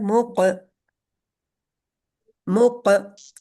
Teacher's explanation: काफ के ऊपर कलकला होगा, लेकिन छोटा कलकला होता है मुक, मुक, काफ मोटा लेटर है और कलकले का लेटर है, मुकसी, वही है, लफ्ज आ गया, हर्फ आ गया ना आगे।